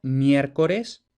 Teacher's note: diptongación de la E abierta tónica